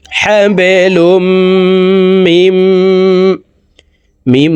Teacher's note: এই মিম সরাসরি তাসদিদওয়ালা মিমের সাথে গুন্না সহিত পড়ব মাঝখানে জজমলা নুন বাদ পড়ে যাবে